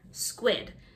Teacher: the S-Q-U sounds like squ, sounds like a W is there